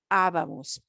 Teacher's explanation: We're not doing the second to last. We're punching the third to the last syllable.